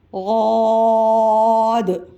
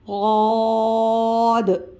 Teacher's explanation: صاد، اس کے برابر میں غاد، مد ہے غاد کے ساتھ، پھر اس کے برابر میں آپ دیکھیے گا دال لکھی ہوئی ہے، تو غاد کی جب ہم ادائیگی کریں گے تو کھینچ کر دال کی آواز بھی ساتھ نکالیں گے۔ غاد موٹا حرف ہے، موٹا پڑھیں گے۔